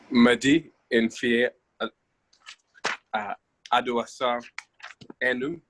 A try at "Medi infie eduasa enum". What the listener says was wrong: Okay, Medi infie eduasa enum. Now the last bit, enum, which is 5, there is the letter M sound at the end. Enum.